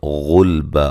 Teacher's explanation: قاف کو موٹا ادا کریں گے، غلبا غین کو موٹا، لام کو ہلانا نہیں ہے